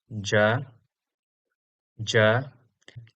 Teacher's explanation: Our next consonant is voiced but unaspirated, that is ja ja represented in IAST by j a.